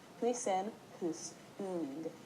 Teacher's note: The Huisen part is meant to be a more even tone.